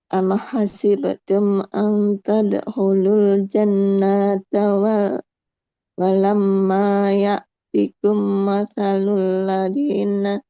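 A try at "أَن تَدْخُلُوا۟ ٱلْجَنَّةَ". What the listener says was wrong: Panjang pendeknya ada yang keliru. Nah, ang tadkhulul jannata nunnya fathah, nggak ada alif, nggak boleh panjang. Am hasibtum an tadkhulul jannata walam ma ya'tikum.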